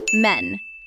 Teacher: M-A, then the N just sits there sakin. No vowel, hard stop. Men. The sukun protects the word.